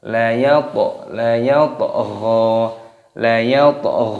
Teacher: Toknya berharokat sukun, dimatikan, dikolkolah, dipantulkan suaranya.